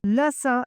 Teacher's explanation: ये दंत्य से बोले जाते हैं यानी दांत से